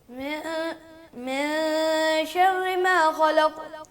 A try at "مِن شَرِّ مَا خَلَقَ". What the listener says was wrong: تیز نہیں پڑھنا, ٹھہراؤ سے پڑھے اس کو تاکہ ایک حرف سمجھ لگنی چاہیے. من شر ما خلق,